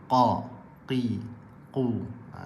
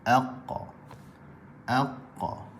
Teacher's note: jadi bahagian pangkal lidah dia bertemu dengan anak tekak. Dihempit ke anak tekak, keluar daripadanya huruf qaf